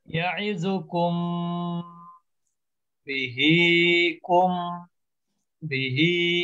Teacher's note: আলাদা শব্দ এখানে একই হোক সেপারেট হোক সব ক্ষেত্রে একই নিয়ম মিম সাকিনের পরের অক্ষরে যদি বা থাকে তাহলে ওই মিমটাকে গুণনা করতে হবে